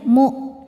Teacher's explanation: Nah ini walaupun ada wawunya yang dibaca hamzahnya saja ya, mu. Hamzah itu salah satu sifatnya dari segi suara syiddah, suaranya tertahan saat kita tekan.